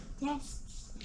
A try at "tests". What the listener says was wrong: It isn't tested. It doesn't have that extra E in it.